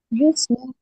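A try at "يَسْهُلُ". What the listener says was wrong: नहीं, मुजारे में या पर हमेशा जबर होता है।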